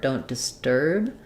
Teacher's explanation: disturb has a really short I sound because it's stressed on the sturb part